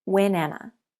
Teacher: We link the consonant onto the vowel. Together, the words are pronounced when Anna.